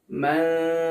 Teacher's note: Serta ketika membaca nun sukunnya dia harus disertai gunnah, karena huruf dal ini adalah huruf yang tipis, maka dia bunyi gunnahnya juga tipis.